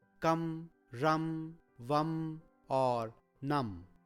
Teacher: In all the cases, there is the sound Ma, that is Halant Ma, that is spoken for the Anuswar.